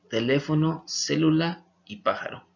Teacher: estas son las que se acentúan en la antepenúltima sílaba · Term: palabras esdrújulas